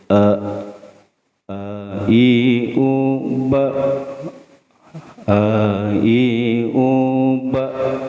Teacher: Nah ini termasuk hamzah. Letaknya makharijul huruf, tempat keluarnya hamzah itu di aqsal halqi, itu ya, di ujung tenggorokan.